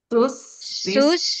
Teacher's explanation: Jadi semuanya dialirkan, semuanya pun berdesis, kedengaran desisnya ya.